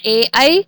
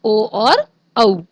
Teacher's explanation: बच्चों, यहाँ पे जो ए ऐ ओ और औ वर्ण है ये संयुक्त स्वर हैं, इसलिए और ये दो वर्णों से मिलकर बनते हैं, इसलिए इनका जो उच्चारण स्थान है वो भी दो उच्चारण स्थानों से मिलकर बना है। इस प्रकार कंठ तालु से बोले जाने वाले वर्ण होते हैं ए ऐ, और कंठ ओष्ठ से बोले जाने वाले वर्ण होते हैं ओ और औ